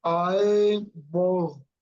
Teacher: okay, eyeball, and the stress is in the first syllable